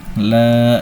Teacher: Di sini ada hukum mad asli sebabnya ada fathah berdiri di atas huruf lam. Artinya kita baca dipanjangkan sebanyak dua harakat.